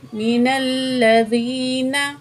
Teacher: फ़रीक़ुम मिनल्लज़ी, नून ज़बर ना, फ़रीक़ुम मिनल्लज़ीना। तो यहाँ नून को खींचना नहीं है, मिनल्लज़ीना यूँ लंबा नहीं करना, आराम से पढ़ेंगे। मिनल्लज़ीना, बस इतना।